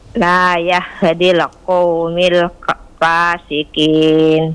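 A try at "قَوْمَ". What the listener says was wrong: qauma bukan qaumi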